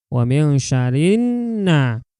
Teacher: Jadi alif lamnya ini enggak dibaca. Tuh ya, untuk alif lam syamsiah.